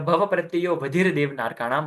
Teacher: यो के बाद सीधा व है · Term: अ का लोप